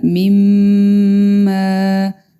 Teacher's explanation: مدہ کو ہم ایک ایک الف کے برابر لمبا کریں گے۔ میم مشدد ہے، اس پہ ہم غنہ کریں گے